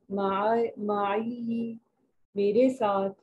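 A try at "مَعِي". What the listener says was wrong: अच्छा सिस्टर जी, यहाँ पर तशदीद नहीं है ना, तो माई बस इसको इतना बस खत्म करते हैं इसको, माई ठीक हो गया जी। या के ऊपर कोई, हाँ जी, कोई कोई इसके ऊपर हरकत में से कुछ नहीं है ना, जेर जबर पेश कुछ नहीं है, तो माई बस इसको यहाँ पर रोक दें।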